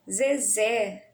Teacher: o mais forte está na última sílaba, né? Então aí a gente pode classificá-la como oxítona.